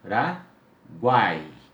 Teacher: O A, como eu disse, sempre será vogal. E eu tenho depois o I como uma semivogal.